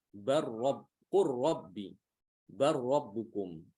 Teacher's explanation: Di sini lam harus diidghamkan ke ro.